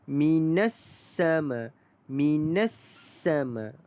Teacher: Minas sama ini adalah alif lam syamsiah. Maka lam itu kita tidak bunyikan dia.